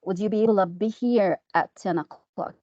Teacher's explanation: He used the schwa instead of to.